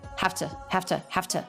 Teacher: So it becomes FT schwa. Have to. Low in pitch, said quickly, simply, without much mouth movement.